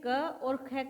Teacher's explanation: दोनों ही स्पर्श व्यंजन है, कंठे है और अघोष ध्वनियां हैं। दोनों की ये तो खासियत समान है, यानी स्पर्श में भी ये समान उच्चारण में है, कंठ से बोले जाते हैं, कंठे भी हैं, और इसके साथ साथ अघोष भी है ये ध्वनियां।